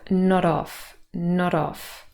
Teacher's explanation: because not is such a short word, really this sounds now like one word